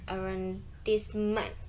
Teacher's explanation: as a French loan word, the stress falls on the final syllable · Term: word stress